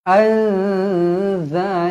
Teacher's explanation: Nun kosong bertemu dengan Zai ikhfa Hakiki dengung dua harakat